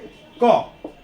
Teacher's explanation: तो आप जब क बोलिएगा तो देखिएगा, ध्यान दीजिएगा, क यानी अंत में आपका अ उच्चारित हो रहा है। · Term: व्यंजन